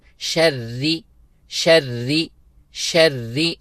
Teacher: را کو باریک کر کے کیونکہ را کے نیچے زیر ہے۔ ومن شری شری شری، شری نہیں پڑھنا بلکہ شری، اور کھینچنا بھی نہیں ہے، شری بھی نہیں پڑھنا بلکہ ایک حرکت کی مقدار۔